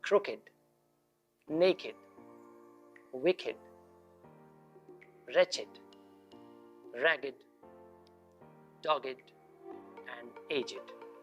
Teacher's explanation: For these words, the ed endings are pronounced id